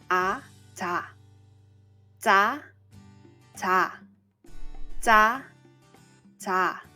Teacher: Similar to b sound, when you are making the z sound, you will be holding your breath for a brief second before you retract your tongue